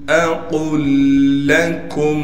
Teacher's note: لام پر تشدید ہونے کی وجہ سے لام پر تھوڑا ٹھہراؤ کریں گے، پھر کاف کو میم سے ملا دیں گے بغیر غننے کے.